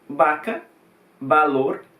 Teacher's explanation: aqui para produzir o som do v e do bebê você tem que emitir o mesmo som que seria b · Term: bilabiado